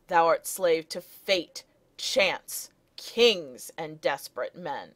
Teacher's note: you have several stresses in a row there in the middle of that line and then peric foot is when a syllable or two kind